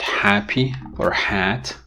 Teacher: voiceless collateral fricative but what happens in real contexts in english a lot of times the consonant ha which is a fricative is pronounced like an approximant because it merges with its following vowel · the distance between the articulators during the articulation of ha is increased